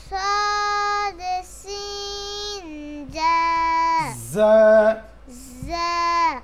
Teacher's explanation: জিহ্বার আগা সামনের উপরের দুই দাঁতের গোড়ার সঙ্গে লাগিয়ে তিনটি হরফ উচ্চারিত হয় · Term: 12 নম্বর মাখরাজ